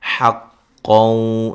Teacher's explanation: نون تنوین کا یہاں ادغام مع الغنہ ہے